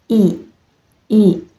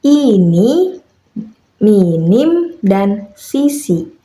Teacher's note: Vokal I dilafalkan dengan posisi lidah diangkat, tinggi ke depan mendekati langit-langit mulut tanpa menyentuhnya. Mulut dibuka sempit, dan bibir ditarik ke samping seperti tersenyum. Udara keluar dengan lancar tanpa hambatan, menghasilkan suara yang nyaring dan tajam. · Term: vokal depan tertutup